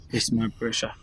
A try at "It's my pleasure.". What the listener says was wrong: No. We don't say pressure. It's your pleasure. Say it.